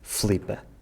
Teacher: With the word Filipa, we also see that in the North the vowels are more pronounced, both Barbara and Miguel say Filipa, while in the rest of the country we tend to say Flipa, cutting out the unstressed I. In Madeira and the Azores, in addition to cutting out the I, they also change the sound of the L again, saying Flhipa instead of Filipa.